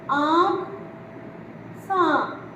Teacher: अनुनासिक शब्द वे स्वर हैं जिनके उच्चारण वायु मुख के साथ साथ नाक से भी बाहर निकलती है। मतलब जब हम इन शब्दों को बोलते हैं तो इनके जो आवाज़ है, जो वायु है, वो हमारी मुख के साथ साथ नाक से भी निकलती है।